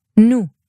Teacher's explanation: Hebrew consistently will use just one pure U